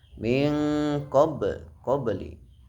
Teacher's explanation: Min qabli terdapat bacaan qalqalah sugro, sebabnya ada huruf qalqalah berharokat sukun berada di tengah-tengah kata, dibaca memantul dengan suara kecil